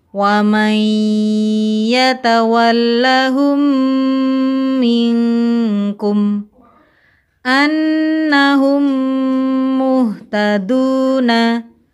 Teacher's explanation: Apabila mim sukun bertemu dengan huruf mim, cara membacanya, mim pertama diidghamkan atau dimasukkan ke dalam mim kedua dengan gunnah yang dipanjangkan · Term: Idgham mimi